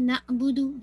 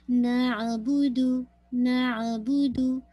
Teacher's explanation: तो बू पूरा गोल आपका लिप हो जाए ना